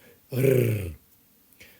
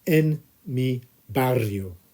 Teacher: there's a double R in the middle, so you need to try and roll those R's if you can. Rrr.